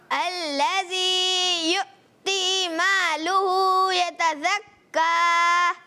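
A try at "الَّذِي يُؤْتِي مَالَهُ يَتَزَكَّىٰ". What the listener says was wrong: دو غلطیاں ہو گئیں، ایک تو الذی یؤتی مالہ، لام پر کیا ہے؟ صبر، اور یتزکا میں زا کی ادائیگی دوبارہ۔ مالہ، لام پر زبر ہے۔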